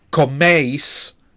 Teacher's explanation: For use, it's eis. So again, we have two clear vowel sounds, eis, with the stress on the first one.